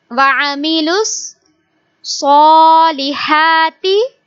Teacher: We will read Swad with heavy sound because Swad is a bold letter and also we stretch it because it has standing Fatha.